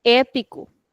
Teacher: So we are extending the sound. Our mouth is open and we are also saying it for a longer time.